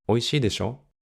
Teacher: For this usage of で し ょ we normally raise our intonation at the end, like 美 味 し い で し ょ However, we sometimes say it with a falling intonation too, like 美 味 し い で し ょ 美 味 し い で し ょ versus 美 味 し い で し ょ In this case, で し ょ is used almost like a rhetorical question.